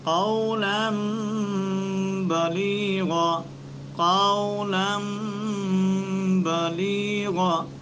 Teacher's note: تو اس نون کو میم سے بدل کر ہم اخفاء کے ساتھ ادا کریں گے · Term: اقلاب